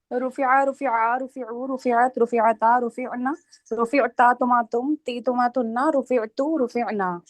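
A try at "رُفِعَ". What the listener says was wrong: Good, very good.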